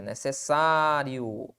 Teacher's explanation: A sílaba tônica está na penúltima sílaba. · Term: paroxítona